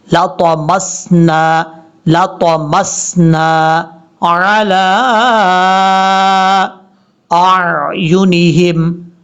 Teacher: یہ طا حروف مستعلیہ میں سے ہے، پر پڑھا جائے گا